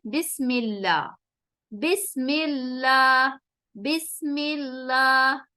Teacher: جب بھی لفظ اللہ یا اللہم سے پہلے زیر یعنی کسرہ آئے گی تو ہم اس لام کو جو ہے، اس لام جلالہ کو ہم باریک کر کے پڑھیں گے، زبان میں ہیوینس نہیں ہوگی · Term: لام ترقیق